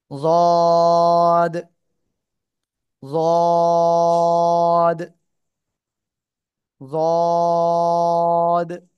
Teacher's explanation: জিহ্বার গোড়ার কিনারা উপরে মাড়ির দাঁতের গোড়ার সঙ্গে লাগে এটা উচ্চারণ করতে হবে।